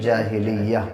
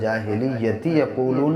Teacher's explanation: تا ہا بنتا ہے، اور جب ملا کے پڑھتے ہیں تو پھر تا پڑھا جاتا ہے. جاہلیتی یقولون، اور رکیں گے تو جاہلیہ.